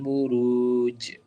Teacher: setelah kamu panjangkan 4 harokat, kamu kasih pantulan di situ